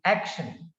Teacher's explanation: So action has two syllables, ak and then shan. So the first syllable is stressed in the word action. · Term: word accent